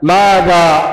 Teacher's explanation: مد طبيعي على الألف، وهذا المد يكون أربعة إلى خمس حركات